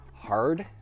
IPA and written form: hɑrd (hard)